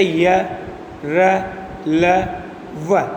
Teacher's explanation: जिन वर्णों का उच्चारण करते समय जीभ मुंह के किसी भाग को पूर्णतः स्पर्श नहीं करती, उन्हें अंतस्थ व्यंजन कहते हैं।